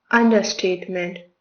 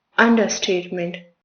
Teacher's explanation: Stress falls on the very first syllable. Un. Say it with me.